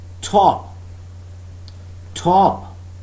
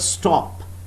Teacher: there is aspiration when i use this phoneme in the beginning of the word top but there is no aspiration unaspirated in the word stop